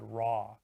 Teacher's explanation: And sometimes L and W also control vowels, like for example in the word raw. It's not like an ah sound like in hat, it's an aw sound. So W is also controlling the vowel sound there.